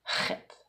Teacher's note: c'est une lettre gutturale, en tout cas qui se prononce avec la gorge